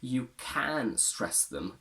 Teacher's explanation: in this case I decided to stress can because I want to create opposition